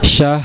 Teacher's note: jangan lupa digetarkan huruf ro-nya